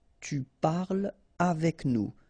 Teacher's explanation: So no liaison here between parle and avec